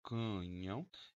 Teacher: O ão no fim da sílaba é um ditongo nasal. Como a vogal está primeiro, semivogal depois, ditongo nasal decrescente. · Tenho duas vogais com ressono nasal neste exemplo.